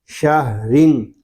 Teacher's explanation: وصل میں را باریک ہوگا کہ را کے نیچے دو زیر ہیں